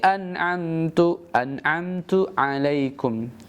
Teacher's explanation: An'am yang pertama hamzah, yang kedua ain ya. Dan jelas membaca nun sukunnya. Ini disebut dengan kaidah izhar halki.